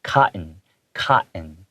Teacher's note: I usually take out the hard T sounds in the words. That's just what local English speakers do.